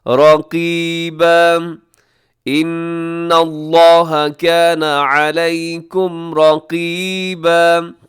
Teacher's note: قاف موٹا ہے، یا مدہ تھوڑا کھینچ کے